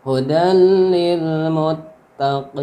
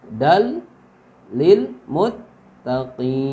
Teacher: Jadi tanwin bertemu lam itu hukumnya idgham bila gunnah. Diidghamkan maksudnya dimasukkan ke huruf lam tanpa gunnah.